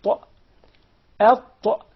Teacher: The ta comes from the tip of the tongue with the root of the upper teeth. The tip of the tongue and the roots of the upper teeth.